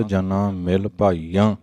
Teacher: ਜਨਾ ਤੇ ਭਾਈਆਂ ਬਹੁਵਚਨੀ ਸ਼ਬਦ ਹਨ, ਤਾਂ ਨਾਸਕੀ ਸਹਿਤ ਉਚਾਰਨ ਹੋਣਗੇ